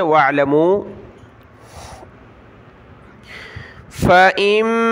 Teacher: میم کے اوپر یہ تشدید ہے تو ہم نے غنہ کرنا ہے۔ حمزہ میم زیر ام، میم الف زبر ما۔